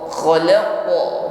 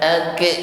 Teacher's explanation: Ketika menekan pada huruf qaf diikuti dengan pangkal lidah yang naik ke langit-langit, sehingga ketika bersukun memantul khalaqo, bunyi pantulannya naik ya ke langit-langit mulut sehingga bunyi yang keluar tebal.